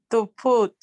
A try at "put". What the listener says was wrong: Lo pronunciaste como lo pronunciaste como con una K y dijiste puk en vez de put.